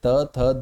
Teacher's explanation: जब हम बोलते हैं तो हमारी जीवा दंत में लगती है